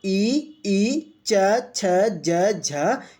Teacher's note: आपकी जो जीभ होगी वो तालव्य को यानी दांत से थोड़ा ऊपर के हिस्से को टच कर रही होगी